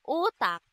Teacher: ang letrang U na kung saan nasa ayos ng dila na mataas sa bahagi ng dila na likod. Ito ay binibigas na o u.